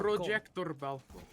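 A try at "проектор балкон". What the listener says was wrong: Projector balcon. No, so the emphasis is on the con, so it's balcon. Projector balcon.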